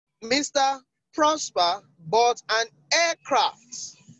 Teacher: the emphasis is on aircrafts